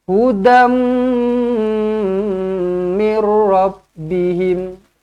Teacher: Hudam jumpa dengan mim sabdu, rapatkan terus bibir, dengungkan 2 harokat.